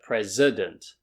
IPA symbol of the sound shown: ə